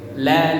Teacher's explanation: Ujung lidah ke langit lam. Kalau lam, ujung lidah harus menyentuh ke pangkal gigi.